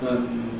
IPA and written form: ən (and)